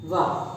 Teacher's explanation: अब रह गया हमारा वा, वा बोल के देखें, ऊपर के दांत नीचे के एक होठ पे रखते हैं, वा, तो वा का उच्चारण स्थान हमारा क्या हुआ, वा का ऊपर के दांत नीचे के होठ पे रखते हैं, तो क्या बनेगा, दंतोष्ठ है, एक ही होठ लगता है, दोनों होठ नहीं लगते, तो हमारा क्या बनेगा, दंतोष्ठ है, वा का उच्चारण स्थान।